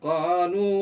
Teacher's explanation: Sedikit lagi, lu-nya panjangkan lagi. 4 ketukan ini.